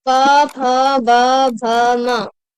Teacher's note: ओष्ठ व्यंजन भी बोलते हैं, क्योंकि इनके उच्चारण में जो है हमारे ओठ आपस में मिलते हैं, इसलिए इनको ओष्ठ व्यंजन भी बोलते हैं।